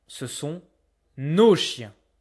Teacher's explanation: I don't hear the S, but I will hear it if there's a vowel afterwards. I will hear the liaison.